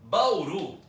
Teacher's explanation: um monossílabo Tonico Bauru tem duas sílabas é um desse ano só que a última sílaba é forte Então ela é uma oxítona